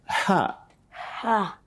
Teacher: it is a letter that comes from the middle of our throat that's where we bring her from now call it after me